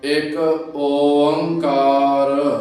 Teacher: ਹੀ ਜਿਹੜਾ ਓਕਾਰ ਸ਼ਬਦ ਦੇ ਅੱਗੇ ਗਿਣਤੀ ਦਾ ਏਕਾ ਲੱਗਾ ਹੈ ਉਸ ਏਕੇ ਦਾ ਉਚਾਰਨ ਕਰਦਿਆਂ ਥੋੜਾ ਜਿਹਾ ਵਿਸ਼ਰਾਮ ਲੈ ਕੇ ਫਿਰ ਅੱਗੇ ਓੰਕਾਰ ਦਾ ਉਚਾਰਨ ਕਰਨਾ ਹੈ